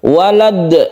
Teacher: ini kita sukun dan dalnya ini merupakan huruf qalqalah, kita pantulkan.